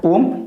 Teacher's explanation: इसमें हरस के तीन गुना समय लगता है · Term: प्लू